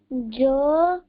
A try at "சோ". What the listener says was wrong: பட்டு ஜோ சொல்லாத, சோ சொல்லு. சோ